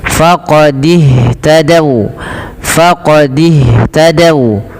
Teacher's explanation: Yaitu kepada huruf ha. Maka dan ha, alirkan nafasnya karena sifat hames. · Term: sifat hamas